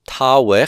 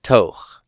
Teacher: the ow, the ow diphthong has become an o with the loss of stress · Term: contraction